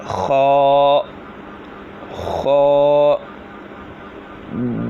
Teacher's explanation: خا جو ہے حلق کے اوپر والے حصے سے ادا ہوتا ہے